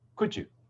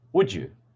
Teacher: The first one is the phoneme d, and the next word being you. This becomes the sound ju.